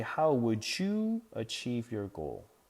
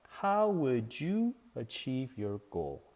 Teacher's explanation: with the D and the Y, it has a J sound.